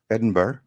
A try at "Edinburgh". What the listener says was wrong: Yeah, it sounded like you put a hard G at the end.